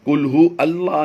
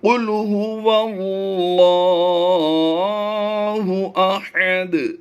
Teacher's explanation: तो इस वाओ की ज़बर जो है ये अलिफ पर लगाकर पढ़ देते हैं, तो ये गलत है। यहाँ पर वाओ लाम ज़बर वल की आवाज़ देंगे, कुल्हू अल्लाह नहीं पढ़ेंगे।